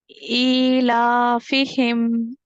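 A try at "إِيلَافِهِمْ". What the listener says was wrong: बारकल्लाहु फीक, बहुत अच्छा pronounce किया। मुझे डाउट था कि कुछ गलती होगी।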